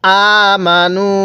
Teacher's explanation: পেশের পরে ওয়াও সাকিন, এজন্য আমরা নুনের মধ্যে এক আলিফ টান দিব